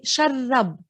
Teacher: So we're geminating the ra over there.